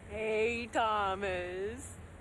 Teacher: the stress syllable starts lower rather than higher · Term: intonation and Pitch